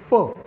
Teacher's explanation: म्हणजे आपल्याला प असेल तर आपण दोन्ही ओठ एकमेकांना चिटकवतो आणि आतून हवा बाहेर सोडतो.